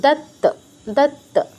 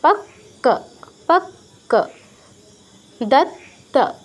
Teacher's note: দুটো ত যুক্ত আছে, মানে দুইবার, মানে প্রথম টাচ তারপর পূর্ণ উচ্চারণ, দত্ত, দত্ত।